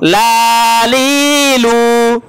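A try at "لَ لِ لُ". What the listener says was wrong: হারকাতের উচ্চারণ টান আছে আপনার টানলেন আমার সাথে সাথে ভুল বলছেন লালিলু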